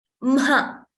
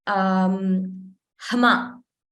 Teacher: we pronounce it as Mha. First M and then Ha. We don't say Hma. Ha is not pronounced first.